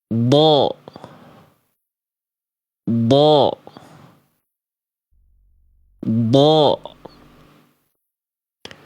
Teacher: ketika melafalkan huruf d, Bunda, ujung lidah kita itu otomatis akan nempel ke langit-langit bagian depan, ya. Tapi bukan sebagai titik tumpu, bukan sebagai titik makhraj, bukan.